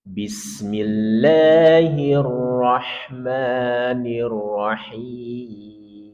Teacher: Kita mulai dari basmalah nada tiga turun